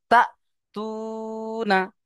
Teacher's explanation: ওয়াও মাদ্দাকে একালিপ পরিমাণ টান দিয়ে পড়তে হবে।